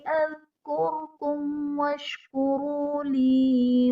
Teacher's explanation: میم ساکن کے بعد حرف با اور میم کے علاوہ واو ہے تو یہاں پر اظہار شفوی کا قاعدہ ہوگا، یعنی میم ساکن میں ہم غنہ نہیں کریں گے